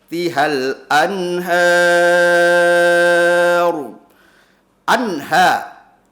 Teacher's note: nun sukun bertemu dengan ha fathah, namanya idhar halqi. Cara bacanya kudu dibaca jelas, nah, tidak boleh ada dengungan.